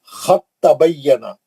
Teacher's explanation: یہاں پہ آپ دال کو چھوڑ دیں گے، تا سے پڑھیں گے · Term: ادغام میں متجانسین